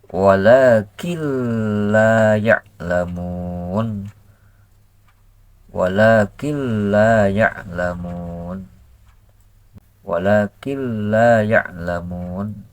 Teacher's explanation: la ylamun Wakin yaalamun ketika kita memasukkan Nun ke lam ya ketika memasukkan Nun ke lam berarti lamnya tasdid tasdid seolah-olah lamnya dua · nun sukun nun mati ke lam itu cara membacanya tanpa guna ketika memasukkan Nun ke lam itu tanpa gunah tanpa memasukkan suara ke Pangkal hidung